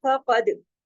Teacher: कुतुब जद, याद रखिए कुतुब जद, कॉफ तो बा जीम दाल, ये 5 हरूफ ऐसे हैं, जब भी ये जज्म के साथ हो तो इन पे कलकला होगा। फक़द, काफ मोटा, दाल पे कलकला, क्योंकि कुतुब जद का लेटर है और जज्म के साथ है